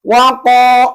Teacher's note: maka membacanya qo panjang dua harakat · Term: mad thobi'i